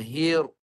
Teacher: Ra tu mesti bergetar. Kalau tak bergetar tak jadi.